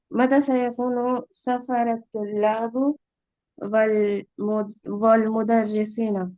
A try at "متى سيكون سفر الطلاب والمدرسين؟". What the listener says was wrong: را پہ زبر نہیں پیش رہے گا.